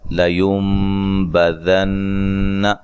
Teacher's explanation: یہاں نون ساکن کا اقلاب مع الغنہ ہے، نون کو میم سے بدل کے پڑھیں گے